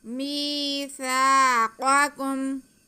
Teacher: میم کے نیچے زیر اور یا ساکن، تو یہ یا مدہ ہو گیا، میم کی آواز کھینچی جائے گی۔ ایسے ہی سا پہ زبر اور ساتھ میں الف ہے، تو یہ الف مدہ ہو گیا، سا کی آواز کو بھی ہم کھینچ کے پڑھیں گے۔